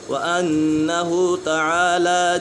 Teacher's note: نون مشدد ہے، نون مشدد میں ہمیشہ غنہ ہوتا ہے۔